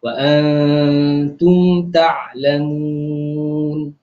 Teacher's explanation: nun mati bertemu dengan huruf ta itu adalah ikhfa hakiki, juga dua harakat dengung.